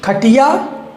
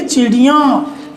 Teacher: यानी नाक से आवाज़ आएगी इनके उच्चारण में